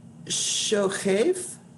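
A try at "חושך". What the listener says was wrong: No, the chet and that dot, that first dot is the O. Cho. Cho, shech. Cho, shech. Not ko, it's a guttural.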